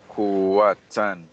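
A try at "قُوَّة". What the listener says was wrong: Kuwa. Don't pronounce ta. It changes into ha because you stop here. Kuwa. Yes, ha. And also, there's another rule. When we stop at the end of sentence, last vowel is ignored. Last vowel is ignored.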